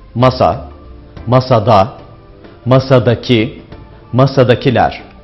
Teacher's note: Mesela masa kelimesindeki vurgu sa hecesindedir. Kelimeler ek aldıkça vurgu sona kayar. · Dilimizde kelimelerde vurgu genellikle son hecededir. Mesela masa kelimesindeki vurgu sa hecesindedir